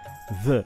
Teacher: And I'd say, "Sorry, mate, do you mean this?" And he'd say, "Yes, dis." And I'd say, "No, no, this." And he'd say, "Yes, yes, dis." And I'd say, "No, no." So what you do is you put your tongue between your teeth and you kind of push the air through like a th noise